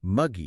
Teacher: Yeah, it has that heavy M sound. Right, the heavy M and then that thick, almost sluggish G in the middle.